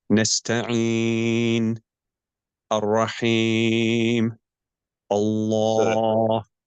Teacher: Ar-Rom, it is to lower the voice when stopping at a dhamma or a kasra so that most of their sound disappears.